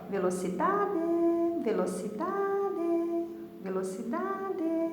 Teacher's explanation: Então, o dá é o mais forte, tá bom? Então, ela é uma paroxítona, porque o dá saiu com um pouquinho mais de força